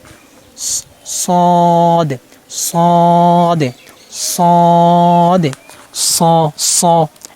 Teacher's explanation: জিহ্বার আগা সামনে নিচে দুই দাঁতের আগার সাথে লাগে উচ্চারণ করতে হবে, তালুটা বাজবে নয় মোটা হবে না। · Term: সদ হরফ